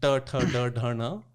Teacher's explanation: मूर्धा पे छू रही है, छत पे छू रही है मुंह की।